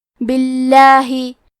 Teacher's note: لفظ الجلالہ کے لام کا حکم ہے تفخیم، تو ہمیں حرف اللام کو موٹی آواز میں پڑھنا ہے